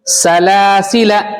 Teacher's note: दूसरा वाला जो लाम है उसके बाद जो अलिफ है ये अलिफ नहीं पढ़ा जाएगा